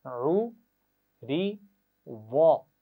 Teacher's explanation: را کو زیر کے ساتھ کیسے پڑھیں گے؟ باریک پڑھیں گے